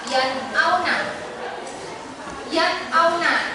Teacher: nunnya dibaca jelas, tidak ada dengung, tidak samar. pokoknya dibaca jelas.